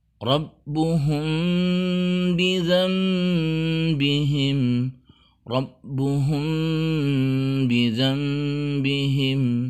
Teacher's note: Terjadilah ikhfa syafawi, yaitu bunyi M yang disamarkan dengan menambahkan gunnah dengan sempurna. Rabbuhum bizambihim, Rabbuhum bizambihim.